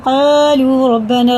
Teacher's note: حرف مد منفصل ہے، 3 الف کے برابر کھینچ کے پڑھیں گے